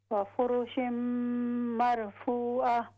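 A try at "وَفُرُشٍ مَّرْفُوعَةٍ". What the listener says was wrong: جی را کو ہیوی کریں، وفرش مرفوعہ۔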